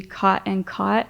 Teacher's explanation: one example would be cot and caught for me these two vowels are the same because I have that merger